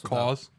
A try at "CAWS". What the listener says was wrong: Claws without the L. Claws.